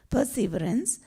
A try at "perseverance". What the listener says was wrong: No, I'm sorry, perseverance. Perseverance. See, in English, you put all the emphasis on the first syllable. In French, you put all the emphasis on the second syllable. So if you say perseverance, that's a wrong way of reading it in English. It's perseverance. Perseverance.